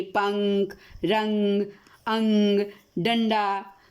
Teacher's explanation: अनुस्वार, इसका चिन्ह शिरोरेखा के ऊपर बिंदु के रूप में लगाया जाता है। इसका उच्चारण करते समय हवा नाक से बाहर निकलती है, जैसे पंख, रंग, अंग, डंडा।